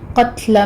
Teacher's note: تا کو باریک رکھتے ہوئے اوپر ہمس ہوگا